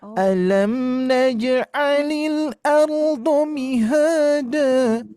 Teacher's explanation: Titiknya di mi-nya Bu. Di mi-nya jangan sampai diturunkan. Mi langsung tinggi ya.